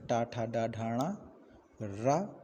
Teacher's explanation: ये सभी वर्ण मूर्धा के द्वारा उच्चारित होते हैं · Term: मूर्धन्य वर्ण